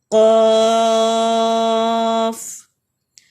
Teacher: زبان کا پچھلا حصہ اوپر نرم تالو کے ساتھ لگے تو قاف ادا ہوتا ہے. یعنی بیک آف دا ٹنگ بالکل اوپر اپر پیلٹ کے ساتھ جب ٹکرائے گی تو تب قاف ادا ہوگا.